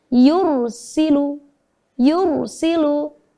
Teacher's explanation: Apabila ada ra sukun yang didahului oleh huruf berharokat fathah atau dhammah, maka ra sukunnya harus dibaca tebal seperti yang sudah saya sampaikan kemarin, ya. Cara bacanya dengan sedikit memoncongkan bibir untuk memberikan sifat tafkhim pada huruf ra sukun